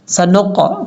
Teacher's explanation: نون کو جب قاف سے ملائیں گے تو قاف میں باؤنس آئے گا، سنق، کیونکہ یہ حروف قلقلہ میں سے ہے، سنقرئک، اس طریقے سے۔